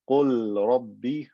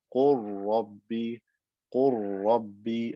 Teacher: I merge the lam into the ra and it becomes one ra with shadda.